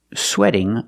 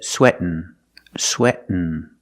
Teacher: Here you take the T, you make a stop T, sweat, and then you fall to the N, sweatin', sweatin'.